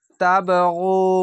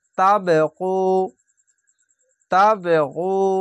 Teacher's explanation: কলকলাটি ধাক্কা মেরে নিচে সাউন্ড আসবে, তাবগু, তাবগু, অবশ্যই গয়নটিকে গু মোটা করে পড়বেন।